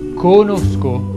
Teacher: Conosco si pronuncia con la O chiusa. Conosco.